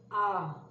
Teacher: आ बोलने में मुझे थोड़ा सा ज्यादा वक्त लगता है, दुगना वक्त लगता है, तो यह हो गया दीर्घ स्वर आ।